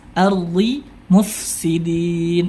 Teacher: Dal bersifat tipis sedangkan Dod meskipun kasrah dia tidak bisa dibaca tipis